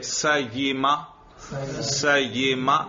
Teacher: دیکھو زبان کے درمیان سے یا ادا ہوتی ہے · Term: وسط لسان